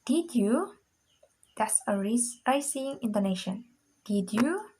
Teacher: First, we use a rising intonation.